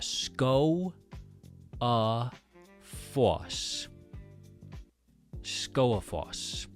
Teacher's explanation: So, the G right in the middle because there's an O with an accent over it right before the G followed by a vowel, the G is not pronounced